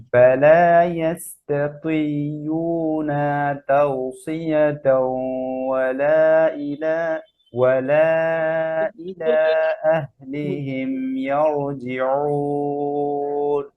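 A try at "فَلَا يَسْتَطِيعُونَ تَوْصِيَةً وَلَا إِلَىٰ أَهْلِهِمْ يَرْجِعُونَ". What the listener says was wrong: আচ্ছা, এখানে দেখেন, ইস্তাতিউনা, উনা বলে ওয়াও হয়, কি হয়? ওয়া, উনা। আইনের মাখরাজ আমরা আজকে আলোচনা করি নাই, কিন্তু ভুল তো করা যাবে না, আইন গদার মাঝখানে, ইস্তাতিউ, উনা।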